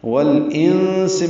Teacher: والانس میں لام ساکن پہ اظہار قمری. انس میں نون ساکن کے بعد سین آنے کی وجہ سے اخفا ہے، نون کی آواز چھپائیں گے. سین کو صفیر کی آواز سے جلدی ادا کریں گے.